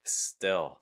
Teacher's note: when an l comes at the end of a word you typically want to use more of a dark l o type sound